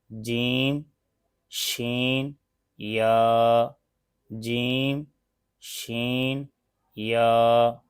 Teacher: जुबान का दरमियान जब ऊपर के तालू से लगे तो इस से तीन रूफ अदा होते हैं